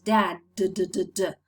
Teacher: If you touch your throat when you say d, you can perceive that your vocal cords are vibrating.